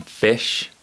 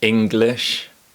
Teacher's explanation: partially close your mouth and raise your tongue in the center of your mouth then spread your lips like you're smiling and produce a short sound from the back of your throat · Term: ih sound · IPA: /ɪ/